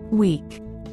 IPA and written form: wiːk (Week)